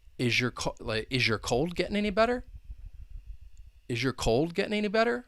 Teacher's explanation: Sometimes with those yes-no questions, you'll have that rising intonation at the end.